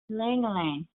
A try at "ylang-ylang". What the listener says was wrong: The last syllable, shorten the A. Ylang, Ylang. Long.